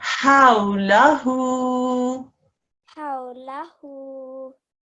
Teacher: So here you recognize that this was a waw leen because the waw sakin has before it a fatha carrying letter, and so the ha eases into the vowel and becomes a how